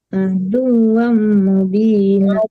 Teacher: jadi adu sekadar ditasjidkan tapi tidak boleh Adu, dengung ya. Aduam sekadar di penekanan tasdid dal ke waw doang, jangan dibawa ke hidung. Tidak dengung itu ya.